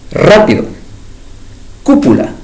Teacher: Luego las palabras esdrújulas, tercera sílaba, contando de la derecha hacia la izquierda. Palabras, como ejemplo, tenemos el caso rápido, cúpula, acento ortográfico, tercera sílaba.